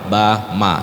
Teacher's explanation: karena dia mim dan Ba Itu huruf syafatain bibir dua bibir jadi menggunakan dua bibir ketika menyebut huruf ba dan Ma